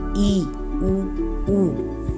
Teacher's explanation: संवृत जो स्वर होते हैं, उनके उच्चारण में जो मुख का द्वार है यानी कि मुंह, वो संकरा हो जाता है, मतलब थोड़ा सा बंद हो जाता है।